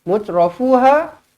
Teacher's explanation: Mutrafuha, ha di sini panjang 4 ataupun 5 harakat.